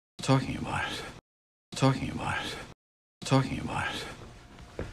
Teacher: this thought group super smooth no breaks no skips no jumps pitch moves up towards the peak and then back down · This T, about it, is a flap linking the two words together. It comes between two vowel or diphthong sounds.